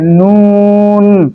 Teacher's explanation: যেহেতু নুনের সাথে গুণা আছে এই জন্য কিছুটা নাকের মধ্যে যাবে